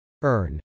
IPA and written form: ˈɝn (urn)